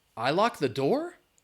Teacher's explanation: the way that I said that with the rising intonation was a question